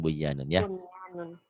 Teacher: Kan nun mati ketemunya idgham biguna. Iya, karena ketemunya satu kalimat, satu kata, satu rangkaian, jangan dibaca idgham, tapi harus dibaca idhar. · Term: idhar mutlak